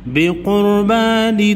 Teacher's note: الا نؤمن لرسول حتی یأتینا بقربان، را کو موٹا پڑھیں گے، قاف حروف مستعلیہ میں سے ہے، موٹا پڑھیں گے، را ساکن سے پہلے قاف پر پیش ہے اس لیے را کو موٹا پڑھیں گے